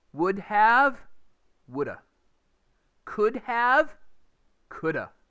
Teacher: you will notice that the h's disappear when they're in the middle of a word